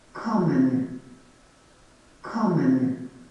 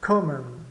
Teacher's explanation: Então, o ko é a sílaba tônica, a primeira.